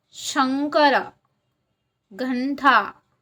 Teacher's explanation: उच्चार त्याच वर्गातील शेवटच्या अनुनाशिका सारखा म्हणजेच पंचम वर्णासारखा होतो शेवटची अनुनाशिके दत्रनम ही आहेत आता उदाहरणार्थ बघा बघा शंकर घंटा